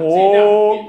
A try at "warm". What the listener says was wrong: Yeah, but the pitch.